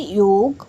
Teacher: तो सबसे पहले आता है य। य तालु की सहायता से बोला जाता है।